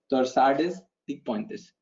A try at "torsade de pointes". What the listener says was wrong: Torsade de Pointe. So this is a French word. In French, you would call it torsade. S is silent because any last letter of any word becomes silent. So it's torsade de Pointe. You have to soften the T. It's not torsade, it's torsade de Pointe.